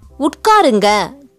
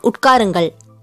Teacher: Like here, people say utkarunga colloquially instead of utkarungal. Just the last letter, il becomes silent.